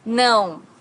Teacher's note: não has a very unique sound in Portuguese because it's a nasal sound. Não.